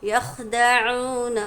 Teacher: यख़दऊन, ख्वा को अच्छी तरह से अदा करेंगे, आइन भी अच्छे से अदा करेंगे, हलक के दरमियानी हिस्से से आइन अदा होता है और साथ ही में वाव साकिन से पहले पेश है, इसलिए इसको एक अलिफ की मिक़दार खींचेंगे।